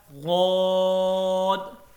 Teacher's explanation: اس کو 5 الف کے برابر لمبا کرنا ہے، اور یہ موٹا لفظ ہے، اس کو پر پڑھنا ہے